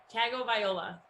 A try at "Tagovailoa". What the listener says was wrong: Tagovailoa. You're very close. It's weird because you say it with an N, not you, like the royal you. You say it with an N. There's no N. There's no N. Yeah, but you do. Tua Tagovailoa.